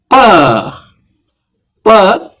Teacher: ಪಕ್ಕೆ ಪ ಉಚ್ಚಾರ ಮಾಡಿದ್ರೆ ಎರಡು ತುಟಿಗಳು ಕೂಡ್ತವೆ